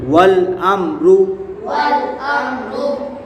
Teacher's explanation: میم ساکن کے بعد را آ رہا ہے تو یہاں اظہار شفوی ہوگا، یعنی گنہ نہیں کریں گے